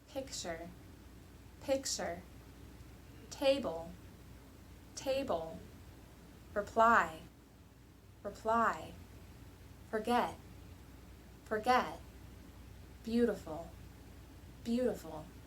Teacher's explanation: for the nouns and adjectives the stress was on the first half of the word whereas for the verbs the stress was on the second half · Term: stress patterns